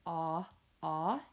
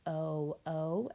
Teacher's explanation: Short O says ah, ah, as in octopus, and long O says O, O, as in ocean.